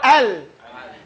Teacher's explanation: The makhraj for ra is at the front, with the tip of the tongue. So we say al, it goes away from the makhraj of lam and goes towards the makhraj of ra. So you say al, and it says, you feel your tongue roll, al. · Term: Inhiraf